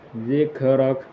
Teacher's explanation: hukumnya ra tafkhim yang kemudian dibaca tebal